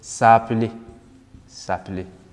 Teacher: Normally, it would have been se appeler, but vowel clash, se appeler, no. So this takes this away and gives us s'appeler, s'appeler.